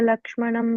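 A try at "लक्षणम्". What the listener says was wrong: Lakshanam. You said Lakshmanam by mistake.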